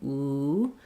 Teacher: that i just move into the tight um rounded position ooh back of the tongue lifted resonance happens in the back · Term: clear vowel